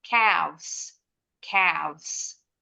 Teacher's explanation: F-nya dirubah dulu jadi V, baru tambahin ES. Bacanya, pita suaranya bergetar.